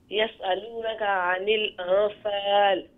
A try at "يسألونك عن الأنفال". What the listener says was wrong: The ikhfa must be, look, anil anfal, not just anfal, quickly. Anfal, a couple of seconds.